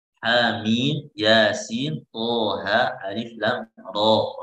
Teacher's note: Ro-nya dibaca 2 harokat karena dia sebabnya hilang.